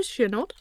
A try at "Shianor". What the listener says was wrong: Without the D at the end. There's no D.